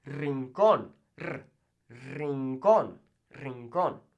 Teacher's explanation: when it starts the word, ere, just one ere, then it's going to roll